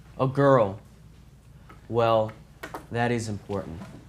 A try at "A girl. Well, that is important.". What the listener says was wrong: Do it again. Louder voice. Emphasize is, and you wait until after speed this up.